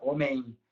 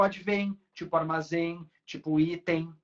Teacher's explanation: A gente faz o som do I, só que nasalizado.